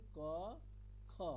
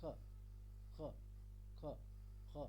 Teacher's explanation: তাহলে কণ্ঠের উপর থেকে খ বলতে হবে। তাহলে পূর্ণ খ বললে কণ্ঠ থেকে বলছি ক খ, আর অর্ধেক খ বলতে জিহ্বা আর একটু উপর থেকে বলতে হবে খ খ খ খ। ঠিক আছে, এটা আমি মানে জাস্ট কেমন হবে সেটা বোঝালাম।